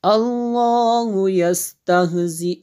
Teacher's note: یہ لفظ اللہ کو پر پڑھیں گے